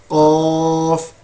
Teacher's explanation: کوے کے قریب جو تالو ہے، زبان کی جڑ وہاں پہ لگ رہی ہے